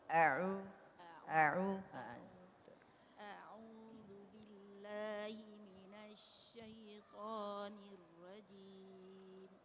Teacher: Jangan kita panjangkan pada hamzah. Jangan. Karena hamzah itu keluarnya pada pangkal lidah, pada pangkal tenggorokan. Jadi satu harakat saja.